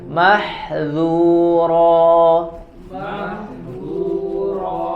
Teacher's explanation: Tipis, huruf dzal, infitah, istifal.